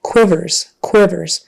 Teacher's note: the Q you know kind of sounds like a qw and then short I the and S Quivers Quivers okay that's all for our client